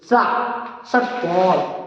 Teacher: ये ट कोण वाले सा को मूर्धा से बोलते हैं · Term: मूर्धन्य